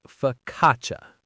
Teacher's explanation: F O C C A C I A. Here the CCI makes a ch sound and that first a is a schwa.